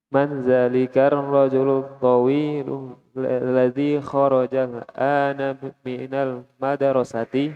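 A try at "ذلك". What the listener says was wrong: Zalika, meskipun tulisannya seperti itu, dia za-nya dibaca panjang ya. Ya, zalika. Sama dengan hadza. Hadza tulisannya seperti ini, tapi ha-nya dibaca panjang. Hadza. Hadza. Zalika.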